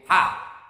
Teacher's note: Ha itu dipegang dada tak bergetar.